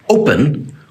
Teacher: the o is the strong part of the word the final syllable is not emphasized